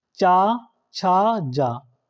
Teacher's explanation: जो कि आपके तालव्य हैं। इनका उच्चारण तालु से होता है।